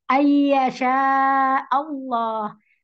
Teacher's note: idgham bi gunnah. Ini didengung dengan dua harokat.